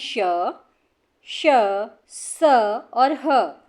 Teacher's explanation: वायु तीव्र गति से रगड़ खाने की वजह से गर्म होकर बाहर निकलती है। यानी कि हवा जब निकलती है तो वो मुंह में ही गर्म होकर फिर बाहर निकलती है। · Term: उष्म व्यंजन